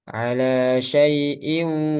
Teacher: Jadi sebagiannya keluar dari pangkal hidung. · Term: ghunah